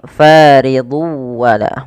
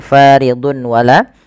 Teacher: kita lihat di sini faridu wala bukan lagi faridun wala tapi tanwinnya masuk ke wau dan ini kita baca dengan bacaan Idgham bighhunah